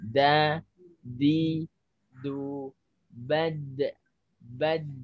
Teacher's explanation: nempelnya banyak sampai ke gusi. Ujung terus agak nyampe ke gusi, agak nekuk gitu lidahnya gitu.